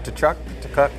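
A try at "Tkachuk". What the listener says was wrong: It's Kachuk. Kachuk. No T.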